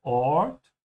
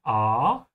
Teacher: In English, the A is a bit closed.